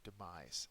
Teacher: The second syllable is accented.